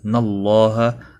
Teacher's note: اللہ کا لام زبر کی وجہ سے پر پڑا جائے گا